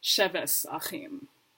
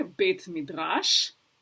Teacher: in old school Ashkenazi pronunciation, tav will change from a T to an S sound